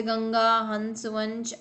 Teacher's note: अन की बिंदी जो होती है उसे अनुस्वार बोलते हैं, यानी कि इसका उच्चारण जो होता है वो सिर्फ नाक से होता है